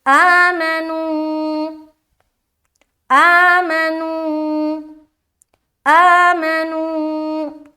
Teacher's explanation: حمزہ کھڑا زبر آ، ایک الف کی مقدار کھینچنا ہے، اس کے بعد میم زبر ما، جلد ادا کریں گے زبر کی حرکت کے ساتھ۔